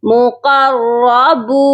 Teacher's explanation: با کے ساتھ واو ہے اسی لیے ہم اس کو کھینچ کر پڑھیں گے